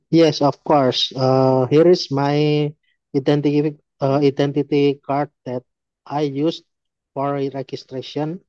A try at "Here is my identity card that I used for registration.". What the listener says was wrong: Oke, nadanya turun ya. That I used for registration. Tadi nadanya kayak mau ngomong lagi karena baca kan.